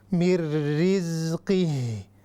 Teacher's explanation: یہاں پر نون ساکن ہے، اس کے بعد را ہے، اس کو ہم کہیں گے ادغام بلا غنہ، بغیر غننے والا ادغام